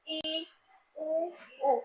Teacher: लगभग इनके उच्चारण करने में हमारा मुंह जो है वो पूरी तरह से बंद रहता है, क्लोज रहता है। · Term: संव्रत स्वर